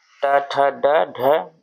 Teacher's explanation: हिंदी की मूर्धन्य ध्वनि है ट ठ ड ढ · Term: मूर्धन्य ध्वनियां